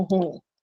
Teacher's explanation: A gramática diz que é ruim, e tem uma razão de ser, porque o in é nasal, então não tem hiato, você não pode ter um ditongo ali. Para você ter ditongo, vai ficar o U nasalizado